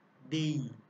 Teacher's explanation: ই স্বরধ্বনিটি থাকার কারণে এই এ ধ্বনিটা স্বাভাবিকভাবে উচ্চারিত হচ্ছে, স্বাভাবিক রূপেই উচ্চারিত হচ্ছে, অর্থাৎ সংবৃত আকারে উচ্চারিত হচ্ছে।